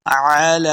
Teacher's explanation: لام کے اوپر کھڑی زبر، اس کو 2 حرکات لمع کرنا ہے۔